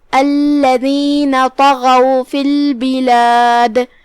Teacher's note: اس کے بعد حرف الغین ہے، غین بھی حروف التفخیم میں سے ہے، تو ہم طا کو اور غین کو دونوں کو بھاری آواز میں پڑھیں گے